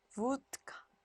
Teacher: 무성음 앞에 유성음이 올 경우에는요. 무성음화 돼요.